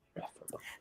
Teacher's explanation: So we stress the first syllable of that word.